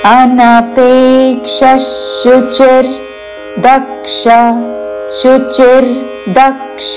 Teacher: విసర్గ ఉచ్చారణ తాళవ్య ష పక్కన షాతో పదము మొదలవుతున్నది కాబట్టి ష ఉచ్చారణ.